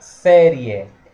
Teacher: pouquinho só palavra série a palavra série é um ditongo oral série é um ditongo oral crescente